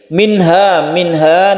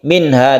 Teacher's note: dibacanya itu jelas dan terang, tidak berdengung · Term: idhar halqi